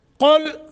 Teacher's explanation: قاف کو موٹا، لام ساکن ہے، قلقلہ نہیں کرنا